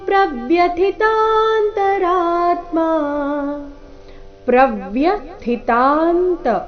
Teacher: ಇಲ್ಲಿ ಥಿ ಮಹಾಪ್ರಾಣ ರಸ್ವ ಮುಂದೆ ಅಲ್ಪ ಪ್ರಾಣ ಇದೆ